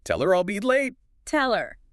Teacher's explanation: The L sound at the end of tell links right into her and her often reduces to just when it's unstressed. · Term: Smooth connection